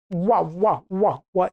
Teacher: दंत्योष्ठ वर्ण केवल एक है, जिसमें दांत और ओष्ठ का प्रयोग होता है, वो केवल है व।